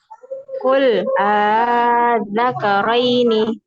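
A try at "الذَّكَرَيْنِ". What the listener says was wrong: Masih terlalu panjang. Qul az-zakaraini az-zakaraini. Yang tashil itu dia tidak panjang. Jadi bukan az-zakaraini enggak, tapi az-zakaraini.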